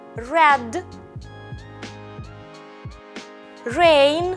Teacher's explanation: відповідного до нього українського звука тим що його вимова позбавлена вібрації під час вимови англійського р кінчик язика загострений піднятий у напрямку до горішнього піднебіння але не торкається його він залишається нерухомим Давайте спробуємо вимовити слова Red Rain [музика] [оплески]